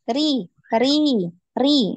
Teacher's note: Rinya tipis ya, jangan dinaikkan pangkal lidah. Jangan ri, ri, ri naik ya.